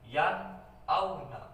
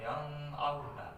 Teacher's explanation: Hamzah ini termasuk huruf idhar. Nun mati bertemu dengan huruf idhar, nun mati, jadi dibacanya jelas yan auna, bukan yang auna, yan auna, jadi jelas ya.